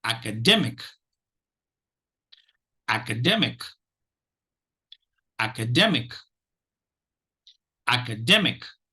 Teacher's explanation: notice uh syllables one and syllables three get the accent one the third syllable is the primary accent that's syllable and the first syllable is the secondary accent itself · So if you notice, syllables 1 and syllables 3 get the accent. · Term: primary accented syllable